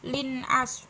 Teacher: idhar halqi lin ini karena kasrotain bertemu dengan huruf ain, jadi bacanya harus jelas